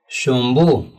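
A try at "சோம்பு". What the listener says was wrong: शोम्ब नहीं सोम्ब,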